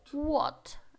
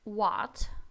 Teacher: разница какая здесь у нас больше А чем О это разница там где в Британии а окают в Америке акают а значит What это американский и What это британский вариант произношение